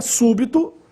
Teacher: E a última, súbito, aí a sílaba tônica é a antepenúltima, su, e também recebe acento agudo no U, súbito.